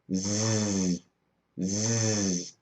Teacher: when I make a z sound Z my throat begins to vibrate